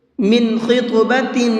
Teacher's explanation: اس لفظ کے اندر خا کو بھی اور طا کو بھی دونوں کو پر کر کے پڑھیں گے، منہ بھر کے پڑھیں گے، اور ساتھ میں طا کے اندر قلقلہ کریں گے، کیونکہ طا حروف قلقلہ میں سے ہیں۔